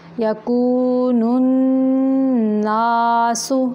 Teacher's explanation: نون مشدد کا غنہ ناک کی جڑ سے، اور نا جو ہے الف مدہ کی آواز منہ سے نکالنی ہے